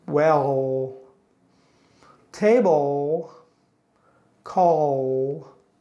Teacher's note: When the L sound is in the middle or at the end of the word, your tongue is more relaxed in the middle.